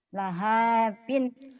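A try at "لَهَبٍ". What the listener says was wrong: Nggak ada yang panjang. Lahabin.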